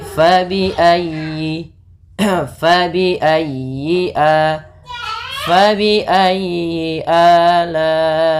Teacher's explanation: Fa, hati-hati jangan dibaca dengan pa. Kemudian dalam ayyi ditekan huruf ya-nya karena dia tasdid, dan huruf ya termasuk huruf lin yang lembut, di dalam pelafalannya jangan dihentakkan.